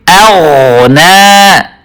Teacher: حمزہ کو باریک کر کے اور غین کو پر طریقے سے. غین کی آواز کو ظاہر کرنا ضروری ہے.